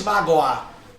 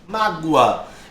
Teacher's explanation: Esse O aqui, perceba que ele tem som de U. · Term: semivogal